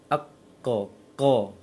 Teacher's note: Qa tertahan suara di pangkal lisan. Kemudian isti'la dia tebal, isti'la naik pangkal lisannya. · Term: syiddah